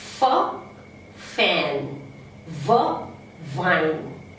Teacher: First is labiodental. We have 2 labiodentals